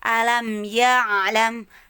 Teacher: Alam di tenggorokan, pangkal tenggorokan yang paling bawah. Lalu ya'lam naik sedikit, ditekannya ke lisanul mizmar atau katup nafas. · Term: huruf ain